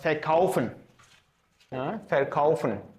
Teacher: the sound f. It's not v, like in English.